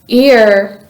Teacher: your tongue stays in the lower part of your mouth when pronouncing the sound ear and your mouth changes position from a smiling position to a more relaxed position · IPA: /iə/